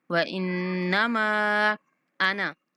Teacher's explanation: نون پر غنہ اور میم کو 3 سیکنڈ تک لمبا کریں گے